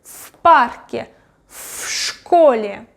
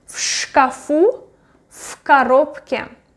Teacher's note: I pronounce v as f because next consonant is unvoiced